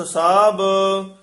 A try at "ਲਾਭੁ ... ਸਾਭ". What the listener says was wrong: ਲਾਭ ਸਾਭ ਭਬੇ ਉਚਾਰਨ ਕਰਨੇ ਹ ਲਾਭ ਸਾਭ ਬਬੇ ਨਹੀਂ ਬੋਲਣੇ ਹਨ।